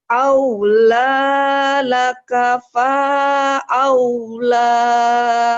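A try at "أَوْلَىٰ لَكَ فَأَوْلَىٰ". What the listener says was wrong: kenapa paknya panjang? Ayo. Aula laka fa aula.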